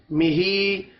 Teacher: ہا کے نیچے کھڑی زیر ہے، ایک الف کے برابر کھینچ کر پڑھیں گے۔